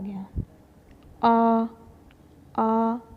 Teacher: मुंह खुल जाता है पीछे से आवाज आ रही है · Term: पश